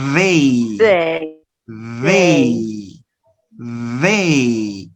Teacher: the tongue goes to the teeth, upper and lower teeth, and you produce a vibration. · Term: dental sound